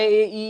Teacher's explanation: ई का उच्चारण स्थान दोस्तों होता है तालु